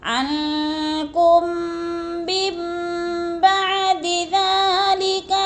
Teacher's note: میم کو میم کے ساتھ ملا کر پڑھنا ہے، درمیان والا نون ساکن نہیں پڑھا جائے گا۔ نون ساکن کے اوپر چھوٹا سا میم لکھا ہوا ہے، اس میم کو پڑھیں گے، جیسے عنکم من بعد ذلک لعلکم تشکرون۔